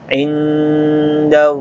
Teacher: mendengung nun sukun ketemu dal